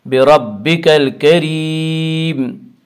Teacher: بربک الکریم، الف لام اگر حروف قمری کے شروع میں ہوں تو صرف لام کو پڑھا جائے گا، الف کو نہ پڑھیں گے۔ کاف یا حروف قمری میں سے ہے اور کاف سے پہلے الف اور لام آ رہے ہیں، اس سے صرف لام کو پڑھا جائے گا، الف کو نہ پڑھیں گے۔